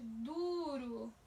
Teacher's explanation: Du é mais forte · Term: sílaba tônica